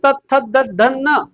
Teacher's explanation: त वरच्या दाताच्या मागच्या बाजूला लागत म्हणून ते दंती आहे